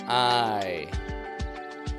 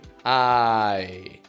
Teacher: I. We developed this pure vowel, ah, and the glide, ye. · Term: I sound